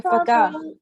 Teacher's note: Kaf doesn't have the tashdid on top, so don't give it emphasis on that